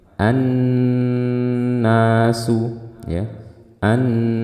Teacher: kita langsung masuk ke nun bertasydid. Ini kita baca dengan gunnah yang panjang.